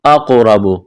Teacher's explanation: قاف کو موٹا کرنا ہے، قلقلہ کریں گے قاف پر ، را کو موٹا کرنا ہے، را کے اوپر زبر ہے،